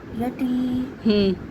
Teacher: یا ساکن سے پہلے زیر یا مدہ، اس کو کھینچ لیں گے